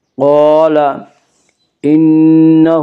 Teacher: الف مدہ کو ایک الف کے برابر کھینچ کر پڑھیں گے۔ قال انہ، نون مشدد غنہ ہوگا، غنہ کی مقدار ایک الف ہے۔ انہ، ہا کے اوپر الٹا پیش ہے، الٹا پیش قائم مقام ہے، وا مدہ کے، اس لیے الٹا پیش کو ایک الف کے برابر کھینچ کر پڑھیں گے۔